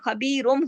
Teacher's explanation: خبیرن کا جو نون ساکن ہے وہ بدل گیا میم کے اندر خبیرم ہو گیا بیما تعملون. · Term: اقلاب